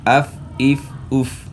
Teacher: फ की अदायगी में दोनों हंठ नहीं मिलेंगे बल्कि ऊपर वाले दो दांत सना औलिया और निचले होठ का जो तरी वाला हिस्सा है इसके साथ लगाना है तो फ पढ़ना है।